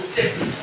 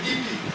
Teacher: On a l'impression que le E est plus long que le I.